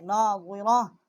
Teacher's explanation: یہ تا ہے، جب ہم نے وقف کیا ہے تو یہ ہا ہے، اس کا مخرج جو ہے وہ ہا جو ہے ہم نے پڑھا ہے، ہا ہو جاتا ہے۔